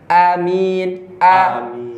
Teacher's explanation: Jangan baladil amin tapi baladil karena kenapa? Karena di hamzah sifatnya Siddah. keras, tegas, lugas.